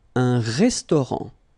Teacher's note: Un restaurant. Final T not pronounced.